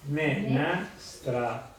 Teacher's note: l'altro fonema cardine è l'AE che si pronuncia come se la E fosse con l'accento grave